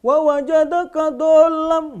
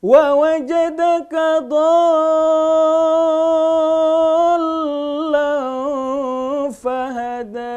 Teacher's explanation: Mad asli di depannya ada huruf yang bertasydid. Bagaimana melafazkannya? Panjang. 6 harokat dulu. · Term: mad lazim musaqqal